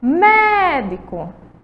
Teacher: Médico, você vai ver que a sílaba tônica de médico é o mé, certo? Que é a sílaba que a gente vai demorar mais tempo chamando, ó. Médico.